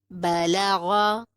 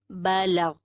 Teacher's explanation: با زبر با، لام زبر لا، بلا، غین زبر غا، بلغا، وقفاً بلغ۔ زبر جو ہے وہ وقف کی صورت میں ساکن میں بدل جاتا ہے۔ غائن کو ہم ساکن کر کے پڑھیں گے وقف جب کریں گے۔